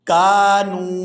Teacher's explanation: یہاں آپ لوگ سکرین پر لفظ دیکھ رہے ہیں کانو کانو، یہاں واو ساکن ہے اور اس سے پہلے والا حرف ہے نون اور اس پر ہے پیش، تو یہ واو مدہ ہے، اور اس واو مدہ کی وجہ سے نون کو کھینچ کر ادا کریں گے 1 الف یعنی 1 سیکنڈ مقدار